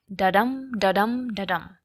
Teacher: It's a two-syllable metrical pattern in which one unstressed syllable or unaccented syllable is followed by a stressed syllable or accented syllable. An iamb has a rhythm that goes like da-dum, da-dum, da-dum, and it works really well for many writing styles and topics. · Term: iambic meter